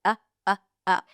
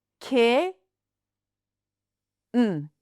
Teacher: I'm not releasing it through the nose. I'm just making an uh sound, but the tongue is up ready for the N. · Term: glottal stop